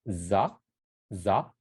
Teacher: The S line becomes the Z sound, za, right? It's voiced.